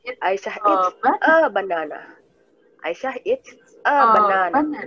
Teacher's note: Kita emphasize-nya di banana.